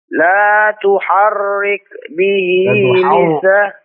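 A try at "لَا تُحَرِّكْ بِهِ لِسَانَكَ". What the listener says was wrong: La tuharrik. Tipis. La tuharrik. La tuharrik. Dan tuhar. Ini ra-nya tipis. Jangan tuhar.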